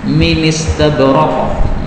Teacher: Minis ini berarti hamzahnya dihapus, kemudian harakatnya pindah pada nun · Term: naql